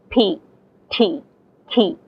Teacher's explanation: in English speaking people say p t key there's an aspiration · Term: voiceless aspirated plosives